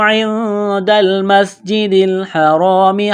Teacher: میم کو سین کے ساتھ، سین میں سیٹی کی آواز پیدا کریں گے